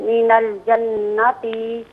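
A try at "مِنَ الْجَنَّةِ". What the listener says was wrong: जन्नती में ता को आपने दोबारा खींचा है, इसे ना खींचें। जन्नती ज़बर ज़ेर फ़कत हो, ज़बर ज़ेर पेश किसी हर्फ पर, उसको बग़ैर खींचे पढ़ते हैं।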